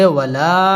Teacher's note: মুনফাসিল তিন আলিফ টান দিয়ে পড়তে হবে